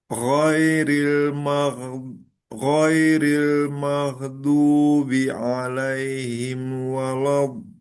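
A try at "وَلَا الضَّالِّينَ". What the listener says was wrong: Nah, untuk lamnya nanti hati-hati ditipiskan lagi. Baik itu harokat fathah maupun sukun ya. La, la, wala, wala dengan walau, tapi wala. nah, nanti di lam sukun juga sama. Do ditipiskan. Dol, gitu. Dan dol, lol, al tipis. Sama panjang dua harokatnya eh, kelebihan sedikit ya. Itu kan panjangnya kan dua harokat.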